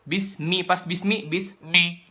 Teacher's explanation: itu kan pas mi-nya itu masuk hidung karena cuma 2 huruf doang yang boleh pakai suara hidung, yaitu nun sama mim.